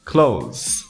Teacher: Você não vai ter que pronunciar o TH quando pronunciar essa palavra. Basta pronunciar como se fosse o oposto de open.